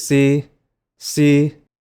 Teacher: This was our very first tone, the high flat tone, represented here by an H because S is one of the four special letters that uses an H instead of an apostrophe.